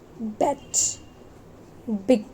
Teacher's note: This ब sound represents the voiced bilabial प्लोजिव sound. Voice sound में vocal cords vibrate होते हैं और बाइलेबियल कॉन्सोनेंट्स में अपर लिप्स और लोअर लिप्स दोनों ही इन्वॉल्व होते हैं.